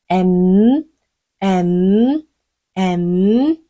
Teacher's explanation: 음가에다가 [박수] 윗입술 아임 줄 다물어서 마무리하시면 돼요 m m m 입을 다물었으니까 공기가 코로 흘러나오겠죠